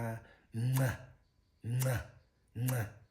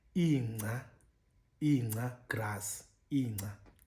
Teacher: Then we have the nasal version, nca, which is a pre-nasalized version, nca, nca, nca, ncuma, smile, ncuma, smile. The slack voice nasal, or it's the slack voice that's pre-nasalized.